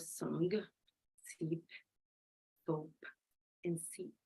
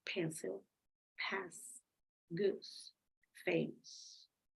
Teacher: you notice how your tongue goes up but it doesn't stick to the alveolar okay if there is a space that's why the air flows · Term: fricative